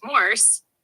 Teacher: Starts mid, dips low, then rises like you're hesitating or surprised. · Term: third tone